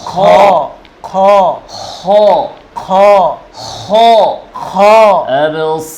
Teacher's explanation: র মোটা করেন أبصارها أبصارها أبصارها خاشعة أبصارها خاشعة খ خ মোটা করে আওয়াজ উপরে জিহ্বার গোড়া উপরে